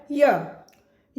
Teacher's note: अब यहां पर तीसरा जो वर्ण है य य अर्थात य य का भी उच्चारण तालु से होता है